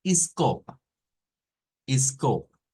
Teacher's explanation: En ambas, la sílaba tónica es co, es la que lleva la fuerza de voz.